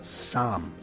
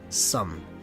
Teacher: It's Saam, spelled S-A-A-M. A-A means you pronounce it longer and with a bigger mouth. So Saam instead of Sum, which is spelled S-A-M.